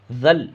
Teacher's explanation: اس زال کو اس لام میں ملانا ہے